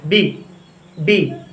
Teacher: रुकावट उत्पन्न हो रही है ना, ब्लॉक हो रहा है, एक बार लिप्स चिपकते हैं।